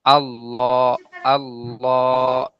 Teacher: আল্লাহ শব্দের লামটা একটু মোটা করে পড়তে হয়।